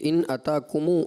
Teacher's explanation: ابھی جو آپ نے 2 آیت مجیدہ تلاوت فرمائی ہیں، ان میں جو پہلی آیت مجیدہ آپ نے پڑھی بیٹا، اس میں آپ نے جب پڑھا قل ارأیتم ان اتاکم، تو یہاں پر ایسا محسوس ہوا کہ میم جو ساکن ہے وہ ضمہ کی طرف آپ کا شاید اشارہ ہو گیا ہونٹوں سے